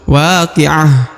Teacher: Huruf ha yang di ujung, huruf ta marbutoh, berubah menjadi ha karena diwakofkan atau diberhentikan bacaannya ya, sehingga berubah menjadi, tadinya huruf ta menjadi huruf ha sukun.